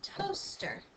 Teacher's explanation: we don't really hear this a because the O is taking control of the word we hear that o first in toaster